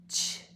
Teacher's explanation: CH, most of the time, sounds like a TSH. It pops before it says sh.